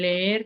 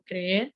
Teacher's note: cambio en las vocales geminadas, que son las vocales como repetidas, como en leer, que son doble E, o creer, que la segunda la cambian por una I